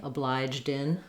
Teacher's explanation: if you put it together with a word that starts with a vowel, you can kind of think of the D as going on to that vowel. So obliged in that way, obliged in.